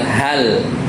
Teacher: ketika lam sukun itu dibacanya itu tidak qalqalah.